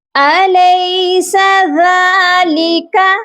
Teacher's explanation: ذال نرم حرف ہے، اس کو ہم نرمی سے پڑھتے ہیں، ہماری زبان کی جو نوک ہے اوپر والے دانتوں کے ساتھ سافٹلی ٹچ ہونی چاہیے۔